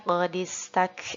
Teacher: jadinya tetap kita dengungkan kita tahan dulu 3 harokat setelahnya sinnya Jangan lupa untuk kita hamaskan